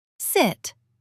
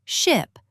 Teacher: Your tongue is lazy for the short I. It stays low and relaxed in ship.